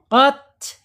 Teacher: Ta ini secara makhraj ada di allisan yaitu ujung lidah menyentuh pangkal gigi seri atas ya. Oot gitu ta mengalir ya.